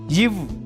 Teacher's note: இந்த மெய்யெழுத்து மேல்வாய் பல்லை கீழ் உதடு பொருந்துவதால் பிறக்கிறது